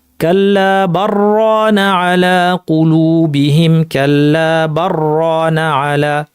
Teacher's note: লামের পরে র আসছে, ইদগাম হয়ে যাবে